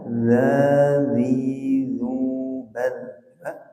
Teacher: ujung lidahnya ditempelkan ke ujung gigi atas ribu dilemaskan nempelnya jangan terlalu kuat ngambang-ngambang saja ya ngambang-ngambang itu